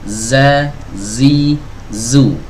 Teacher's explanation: suaranya itu justru keluar dari celah kecil, ya, yang terletak, ya, antara gigi seri atas dan gigi seri bawah.